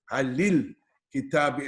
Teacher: instead of the sukoon, you put a e sound in there, which means you put a helping vowel on here.